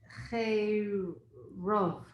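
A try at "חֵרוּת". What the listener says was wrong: But just say pronounce the resh with a kibbutz. Ru. So say it again.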